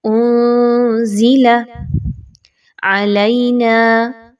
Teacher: نون ساکن کے بعد زا کا حرف ہے، آپ نے اس کو اخفا کرتے ہوئے پڑھنا ہے